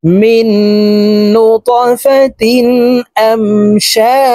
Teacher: ধাক্কা দিয়ে উচ্চারণ করে জিমকে সাকিন করে ফেলবো।